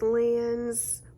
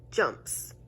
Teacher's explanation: you can hear the s instead of the z sound even though they're all s's